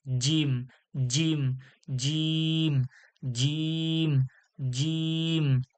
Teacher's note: জিম এটা শক্ত ও কঠিন আওয়াজ, জিম জিভের মাঝখান থেকে বলতে হবে চেপে